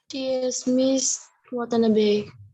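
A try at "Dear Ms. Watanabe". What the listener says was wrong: Must, ta đọc là must, not miss. Dear must Watanabe.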